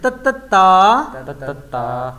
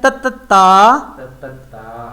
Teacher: اوپر لگ رہی ہے. زبان کی جو نوک ہے جو ہماری زبان کی نوک ہے وہ اوپر کے دانتوں کے ساتھ ٹچ ہو رہی ہے